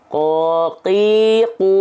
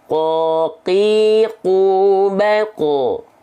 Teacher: karena pangkal lidah menyentuh ke langit-langit lunak saja maka ini pertemuannya antara eh pangkal lidah kan teksturnya lunak bertemu · lidah menyentuh ke langit-langit lunak saja maka ini pertemuannya antara eh pangkal lidah kan teksturnya lunak bertemu dengan langit-langit yang lunak maka tidak ada pergesekan yang kuat sehingga mengakibatkan tidak ada sifat nafas makanya sifatnya jahr qoqiqo gitu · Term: jahar